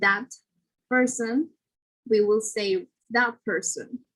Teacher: the t will become a p sound before a bilabial consonant. For example, instead of saying that person, we will say that person. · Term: regressive assimilation